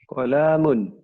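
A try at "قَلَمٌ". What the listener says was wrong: Oh, pendek Pak bacanya.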